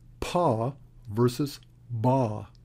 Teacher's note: Pa and ba are bilabial, meaning that they involve both of your lips